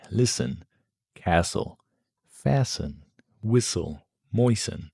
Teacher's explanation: In all these words, the T is completely silent. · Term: silent T